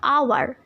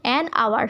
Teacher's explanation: though there is a H and it is a consonant, but I have not pronunciated it and I have skipped this H. That's why that has become an n. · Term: mute H